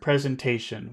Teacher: I think we're going to put a bit of a stress in station. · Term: low stress